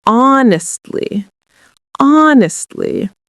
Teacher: we pronounce honestly by putting the stress on the first syllable